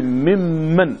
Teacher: aka shigar da nun na min cikin ɗayan a matsayin idghamul mutamathilain